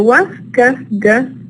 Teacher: they are not produced at the front area of the mouth, but they are back sounds · in their production, the tip of the tongue or the blade is not involved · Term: velars